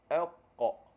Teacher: Huruf qaf ni dia duduk dekat langit-langit lembut.